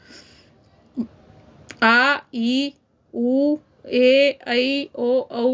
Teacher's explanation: इनमें ह्रस्व स्वर से दुगना समय लगता है इनके उच्चारण में। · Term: दीर्घ स्वर